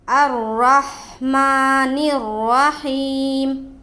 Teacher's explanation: یہاں پر بھی را کے اوپر زبر ہے، را کو پر پڑھیں گے، ہا کے ساتھ ملاتے ہوئے پڑھیں گے